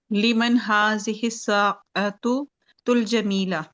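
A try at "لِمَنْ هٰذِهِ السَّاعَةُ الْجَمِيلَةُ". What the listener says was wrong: जमीला तू। हाँ अभी रुकना नहीं, ठीक है, कुरान में तो हम रुक जाते हैं ना, यहाँ पे नहीं रुकना। यहाँ पे जो हरकत है उसको पढ़ना है, ये अरबी है।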